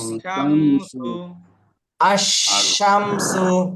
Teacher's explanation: সিন হরফে শামস, তাহলে লাম বাদ দিয়ে পরে হরফে তাজদিদে পড়তে হবে